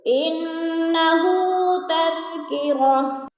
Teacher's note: انہ تذکرہ، تذکرۃن، اب گول تا کے اوپر دو پیش ہے، وقف کی صورت میں دو پیش نہیں پڑھے جائیں گے بلکہ ساکن کر کے پڑھیں گے۔